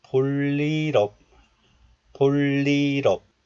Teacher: the final consonant real of this letter moves to the next letter because of the rule of linking